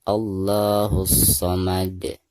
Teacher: Karena alif lam tersebut berhadapan dengan salah satu huruf syamsiah yaitu shad ya di sini. Maka alif lam di sini tidak dibaca atau tidak dianggap ya. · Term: alif lam syamsiah